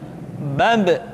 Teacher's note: Ketika mati, maka terdengar suara pantulan.